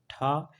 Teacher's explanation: यह अघोष है लेकिन महाप्राण है